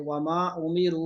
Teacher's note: उमीरू दोनों जगह लम्बा करेंगे